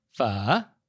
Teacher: And Vietnamese is a tonal language. And so it's a low falling and then rising tone, kind of like Mandarin's third tone. So it sounds like you're asking a question, pho.